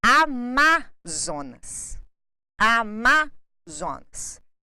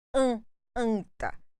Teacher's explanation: nós temos a vogal a com a consoante n seguida de outra consoante então nós temos a nasalização do a com a letra N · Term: vogais nasais